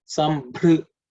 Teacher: It's the fourth letter in the pavarga, so it has to be aspirated.